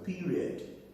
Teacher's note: The vowels at the end, because the falling tone is applied on that syllable, the vowels there can take schwa. Then we're saying period, not period.